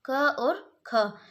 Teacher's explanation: तो क और ख ये किस क्या है? जिह्वा का मूल मतलब जीभ जो होती है हमारी उसके मूल से ये बोले जाते हैं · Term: जिह्वा मूल